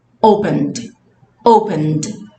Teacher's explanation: ela soou com o final com D e o E, puf, some